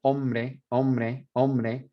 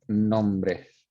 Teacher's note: the M and the N together, there's almost like a BR that inserts itself right there, and that that N falls off.